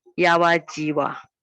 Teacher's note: Sometimes it still retain the final a, long a.